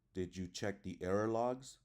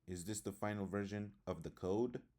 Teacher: the pitch of the voice Rises at the end of the sentence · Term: Rising intonation